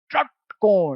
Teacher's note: एकदम जीभ को मोड़ के पीछे ले जाओ। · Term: मूर्धन्य